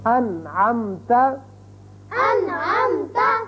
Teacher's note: اب نون ساکن کے بعد عین آ گیا، نون پر ہم نے اظہار کیا، نون کو ظاہر کر کے پڑھا